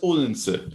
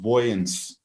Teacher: the local dialect seems to have basically retained the diphthong that you also find in Old English and in Dutch, in wo, instead of turning it into a long O.